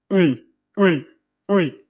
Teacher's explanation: C'est en quelque sorte un mélange entre le i et un léger u français.